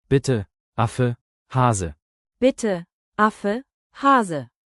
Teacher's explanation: E harfi Türkçedeki gibi fakat kelime sonlarındaki E harfi biraz ı'ya yakın okunabiliyor.